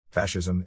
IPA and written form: ˈfæʃɪzəm (Fascism)